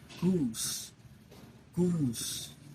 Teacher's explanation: The first one rounded. The lips are puckered upward lengthening the focal tract like goose.